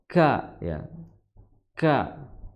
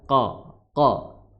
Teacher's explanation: Kemudian cara mengucapkannya disertai dengan hembusan nafas